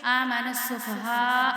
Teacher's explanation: اب یہ بڑی مد ہے، اس کو ہم جو ہے وہ 5 الف کے برابر کھینچیں گے